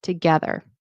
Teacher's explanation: So it's the get that has the stress, together.